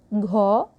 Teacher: तालु से जीभ नहीं टकराती है, किसमें? घ में, कंठे में, क्योंकि ये कंठ से बोले जाते हैं।